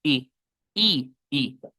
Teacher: Una i con los labios relajados. Eh, una i corta